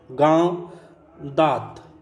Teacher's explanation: अनुनासिक वर्ण के उच्चारण में नाक से बहुत कम सांस निकलती है और मुंह से अधिक